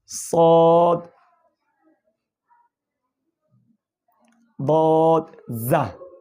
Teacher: 12 নম্বর মাখরাজ, জিহ্বার আগা সামনের নিচের দুই দাঁতের পেট ও আগার সঙ্গে লাগাইয়া।